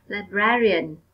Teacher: ở đây các em nhấn mạnh vào âm tiết số 2, Librarian.